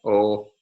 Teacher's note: a mid-low back rounded vowel o